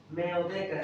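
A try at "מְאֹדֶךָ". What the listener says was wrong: no, meodecha. Should be meodecha. There's no dot here in the chaf. In the Aromi Mecca, there is a dot in the kaf. So it's kaf, not chaf. But here it's chaf. When you follow the vowelization, if there's a dot, it's kaf.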